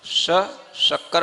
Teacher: तालू पर जब आपकी जीभ लगेगी तब श बोलने में आएगा, समझ आ रहा है, इसलिए उसको नाम बोलते हैं तालव्य श।